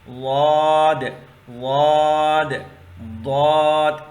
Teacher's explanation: آپ کی زبان کے جو سائڈ سے، سرا نہیں سائڈ، آپ کے داڑوں کے ساتھ دونوں طرف لگا لیں یا ایک طرف لگا کے اس لفظ کو ادا کریں گے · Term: داڑوں والا حروف